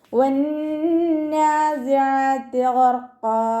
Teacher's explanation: ഗൈനിൻ്റെ മഖ്റജ് അദ്നൽ ഹൽക്കാണ്. നമ്മുടെ തൊണ്ടയുടെ ആദ്യ ഭാഗം. ഗൈന് ഇസ്തിഅലാൻ്റെ ലെറ്ററാണ്. · നമ്മുടെ നാവിൻ്റെ ടിപ്പ് താഴെ മുൻപല്ലിൻ്റെ ഉൾവശത്ത് വെച്ചിട്ട് ഉച്ചരിക്കുക. അയിനിൻ്റെ മഖ്റജ് വസത്തുൽ ഹൽക്കാണ്. സൗണ്ടിനെ ഹംസയായി പോവാതെ ശ്രദ്ധിക്കുക. · ഗൈന് ഇസ്തിഅലാൻ്റെ ലെറ്ററാണ്. തഫ്ഹീം ചെയ്തിട്ട് ഉച്ചരിക്കുക. · റ കൽക്കലയുടെ ലെറ്റർ അല്ലാത്തത് കൊണ്ട് ഹഫ് സുക്കൂന് കൊടുക്കുക.